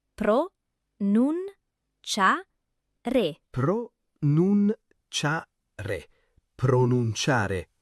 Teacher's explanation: Perfetto, l'accento cade su cia.